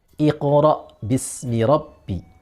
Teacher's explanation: huruf ta sama huruf qaf, keduanya memiliki sifat isti'ala. Maka ketika disukun, memantul, dia tetap harus isti'ala.